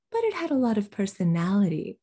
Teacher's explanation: english we reduce function words this is what they're talking about all of those words going quickly and lightly before personality